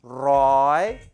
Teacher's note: This word roi is a high tone, so you have to say it as if you're straining.